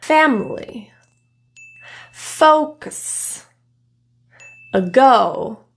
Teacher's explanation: the schah is produced in a quicker way because it's in reduced syllables it's almost like the vowel can kind of sound like it's · notice the schah occurs in the unstressed syllables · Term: schwa